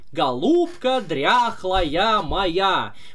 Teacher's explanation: мы делаем акцент на вторую я как будто бы она тоже ударная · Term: псевдо ударным слогом